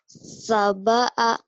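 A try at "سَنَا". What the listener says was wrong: Sabaa. Kamu masih lupa titik sayang. Ini bukan Mbak. Konsen. Ini Nun sayang ya. Nun. Sanaa.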